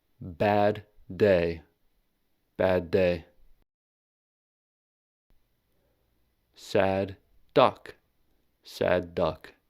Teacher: we need to stop and hold the first d sound and release it at the second d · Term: gemination method for stops